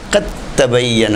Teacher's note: تبت یدا قد تبین الرشد من الغی، قد تبین و قد تبین نہیں ہے، تا سے پہلے جو دال ساکن ہے تو یہ دال بھی تا بن جائے گا